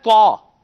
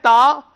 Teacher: حروف مستعلیہ آپ نے اس کو پر کر دیا، تا ہے طا، اس کو پر کر دیں گے تو یہ طا بن جائے گا، اور باریک کر دیں گے تو یہ تا بن جائے گا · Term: استعلاء